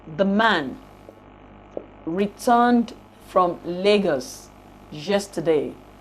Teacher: while the grammatical words would be unstressed and uttered very weakly among the content words the last stressed syllable of the sentence which would be the yes of yesterday we have the nuclear stress which will be the most prominent · we bear the nuclear stress on yes